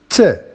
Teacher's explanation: It is voiceless, of course. It is an alveolar because the tip of the tongue, touches the alveolar ridge. It is a plosive because we have that explosion.